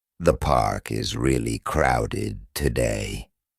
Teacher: The falling tone at the end makes it clear this is a comment, not a question.